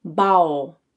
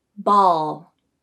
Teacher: opposite of the tongue placement for the dark L and two the lips have usually been rounded to make the o sound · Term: au substitution